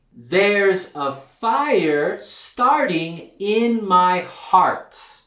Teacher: the American R it's a very dark R it's produced in the back of your mouth the sides of your tongue are going to touch the back of your upper teeth the tip of your tongue is going to curve back but